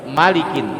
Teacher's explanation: ma-nya langsung nyambung ke huruf la. Jadi dia tidak ada hukum panjang di situ, pendek. Malikin, jadi dibaca cepet, Malikin gitu.